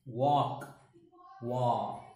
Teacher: l is silent here a is again pronounced like ah